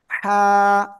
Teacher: গলাটা চেপে হালকা বাতাস বের করে এক আলিফ টেনে উচ্চারণ করতে হবে